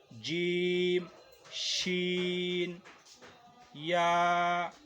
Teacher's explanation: یہ تینوں الفاظ زبان کا بیچ جب تالو سے بیچ سے لگے گا تو یہ ادا ہوں گے